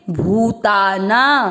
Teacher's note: भू की मात्रा बड़ी लंबा खींचेंगे